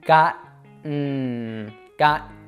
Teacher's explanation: first of all, we're going to pretty much fully drop the vowel. It almost disappears altogether.